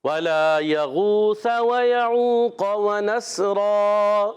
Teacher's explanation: وَنَسْرَا واو پر زبر ہے، واو کے دائیں گونٹوں کی گولائی سے، وَنَس نون کو سین سے ملانا ہے، سین سیٹی کے ساتھ، اور دو زبر کی تنوین کو الف سے بدل دیں گے، دو زبر کی تنوین کو الف سے بدل دیں گے، اس کو کہتے ہیں وقف بالابدال مع الالف۔